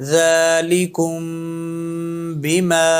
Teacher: میم ساکن کے بعد جہاں با آ جائے وہاں میم پر اخفا کریں گے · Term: اخفائے شفوی